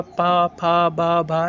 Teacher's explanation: ओष्ठ, क्योंकि ओठ इसमें टच होता है। जैसे पा बोलो तो पा में ओठ आपका दोनों टच होगा